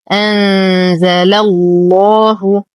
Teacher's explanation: نفخم اللام في اسم الجلالة لأنها سبقت بفتح